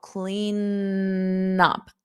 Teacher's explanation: I can hold out that N to link it together to the vowel.